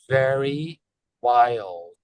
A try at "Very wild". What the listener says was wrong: Can I have a little bit more D there? Very wild.